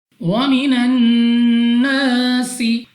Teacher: سب سے پہلے ہمارے پاس یہاں پہ ہے نون مشدد غنہ کر کے پڑھیں گے. الف سے پہلے زبر الف مدہ 2 سیکنڈ تک کھینچ کر پڑھنا ہوگا. اس کے بعد ہمارے پاس سین ہے, سیٹی والی آواز کے ساتھ پڑھیں گے.